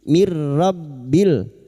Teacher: nun sukun bertemu idgham bila guna masuk pada huruf ro tanpa mendengung mirbil bertemunya nun sukun atau tanwin dengan huruf lam dan ro